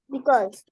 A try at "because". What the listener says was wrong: No, not cause, beta. No, because. नहीं, देखिए इसमें ओ कहाँ है. ये मैंने पर्पल कलर में लिखा है. जरा इसे बोलो. ज है बेटा.